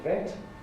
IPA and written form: vet (vet)